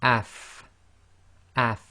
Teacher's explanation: So in this case it's going to be af, af, and you should really be able to feel your teeth coming together, your upper teeth coming together with the inside of your bottom lips